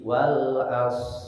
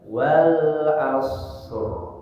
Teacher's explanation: Huruf ra terakhir ketika membaca surat Al-Asr itu banyak orang yang menghilangkan huruf ra dan itu fatal kesalahannya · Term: suara takrirnya